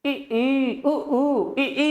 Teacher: ई और ऊ में आपका मुंह क्या है, बंद सा है।